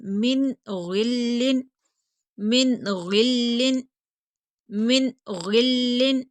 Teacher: انعمت، انعمت، انعمت، من غل، من، نون ساکن، اس کے بعد حروف حلقی میں سے غین آ گیا، تو یہاں پر ہم غنہ نہیں کریں گے، اظہار کریں گے، جلدی پڑھیں گے